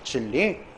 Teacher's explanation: 니은음으로 표기된 것이 리을로 발음돼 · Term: 유음화